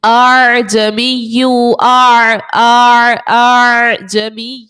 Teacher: بظاہر تو ہم نے پڑھنا تھا اعجمی، لیکن ہم نے دوسرے حمزہ کو نرمی کے ساتھ پڑھنا ہے، یہاں پر تسہیل کرنا ہے. اس لیے ہم پڑھیں گے اعجمی، اعجمی، ایسے پڑھنا ہے کہ اسی حمزہ کے ساتھ وہ بھی ایڈ ہو جائے اور اس کو نرمی کے ساتھ ہم پڑھ لیں.